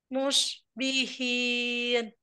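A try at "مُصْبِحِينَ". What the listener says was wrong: Sofirnya Masya Allah, sofirnya bagus ya, tapi kurang tebal gitu. Musbihin.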